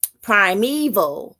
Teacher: Primeval, it has three syllables. And prime is the stressed syllable in the word. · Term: dactyl